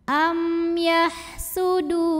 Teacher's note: Maka mim sukun dibaca jelas. Jadi bunyi M jelas tidak ditahan. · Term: izhar syafawi